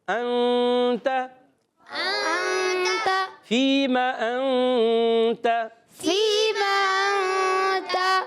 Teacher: نون کو چھپا کے ادا کرتے ہیں، تو یہاں پر بھی ہم چھپائیں گے۔ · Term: اخفا